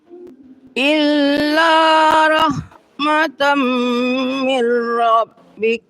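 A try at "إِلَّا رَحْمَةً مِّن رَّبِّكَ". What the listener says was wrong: Coba sedikit. Setiap berdengung itu ditambah lama sedikit lagi. Ditekan. Illa rahmatam min rabbik. Nah, nak terangnya jadi idgham dia, Bu. Min dia jadi mirra. Illa rahmatam min rabbik.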